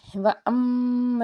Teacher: وَأَمَّا الَّذِينَ، میم کے اوپر تشدید، میم مشدد تو خوب گنہ کریں گے